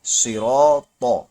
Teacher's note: یہاں پر را بھی موٹا ہوگا، الف بھی موٹا ہوگا کیونکہ را پر زبر ہے اس لیے موٹا ہوگا، اور الف اس لیے موٹا ہوگا کیونکہ اس سے پہلے پر حرف یعنی را آ گیا ہے نا، اس لیے۔